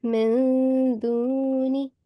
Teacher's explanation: you have to conceal the nasal sound of noon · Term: ikhfa